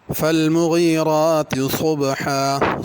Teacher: صاد کو پر کرنا ہے اور حا بڑی ہے